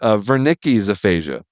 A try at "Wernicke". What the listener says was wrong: I am placing the emphasis on the first syllable. You're doing it the other way.